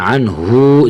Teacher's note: جھٹکا بھی نہیں دینا، حمزہ نہیں ہے، صرف پیش ہے